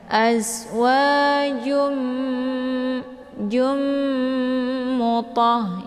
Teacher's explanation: Jadi cara bacanya yaitu ditekan kemudian ditahan suaranya 2 harakat, kemudian dileburkan suara ke dalam huruf mim ya. Karena idgham bi gunnah ini adalah dibaca dengung ya.